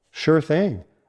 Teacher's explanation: Link sure and thing so it sounds like sure thing, with no hard pause between the words.